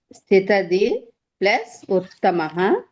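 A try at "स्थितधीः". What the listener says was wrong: స్థితధీహి విసర్గ పలకాలి క్లియర్ గా. ఈకారం తర్వాత ఉన్న విసర్గకి ఉకారం అనే అచ్చు పరమైంది, అందుకని అది విసర్గ రేఫగా మారిపోయింది.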